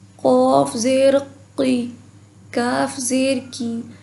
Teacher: زبان کی جڑ اور تالو سے ادا ہوتے ہیں